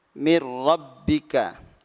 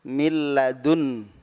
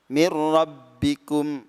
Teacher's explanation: Lam ro tidak boleh didengungkan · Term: Idgham bila gunah